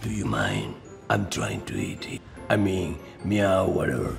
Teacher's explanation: decided on a more breathy and deep tone giving the character more gravitas